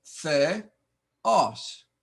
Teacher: Notice the accent on the second sound. Theos. No diphthong here.